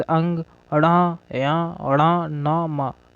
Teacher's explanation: इसमें नाक से थोड़ी हवा, वायु प्रणाली निकलती है, तो इन्हें नाक से बोले जाते हैं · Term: नासिक